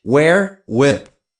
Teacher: H was silenced in the group wh